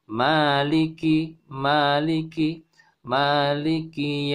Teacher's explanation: Di Al-Fatihah ini untuk riwayat Imam Hafiz maka ma-nya dibaca panjang 2 harokat.